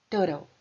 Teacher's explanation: Igual quando a gente fala water. Então, ao invés daquele som duro do T, a gente usa r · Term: T mais suave